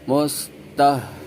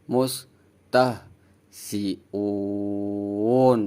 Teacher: Ha berharokat sukun, hanya dibaca hanya keluar angin. Dan suaranya itu dari tenggorokan dalam ya, mustahziun.